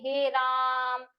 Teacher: तीन मात्रा का समय लगता है · थोड़ा हम बढ़ा के बोलते हैं ऐसे साउंड करके हे राम तो इसमें थोड़ा ज्यादा समय लग रहा है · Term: प्लुत स्वर